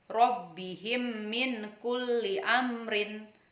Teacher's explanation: Hukum bacaan ini berlaku ketika mim mati bertemu dengan huruf mim, dibaca menjadi satu seolah-olah menjadi bertasdid dengan disertai dengung atau gunnah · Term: Idgham mimi